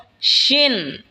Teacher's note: শিন জিহ্বার মধ্যখান তার বরাবর ওপরে তালের সঙ্গে লাগা উচ্চারণ হবে শিন।